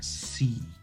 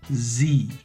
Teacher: The difference again is C is only in the front of my mouth. Only in the front. Z, there's a vibration in my throat. Z. C, only air.